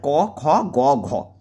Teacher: এক আর তিন হচ্ছে অল্পপ্রাণ। দুই আর চার হচ্ছে মহাপ্রাণ।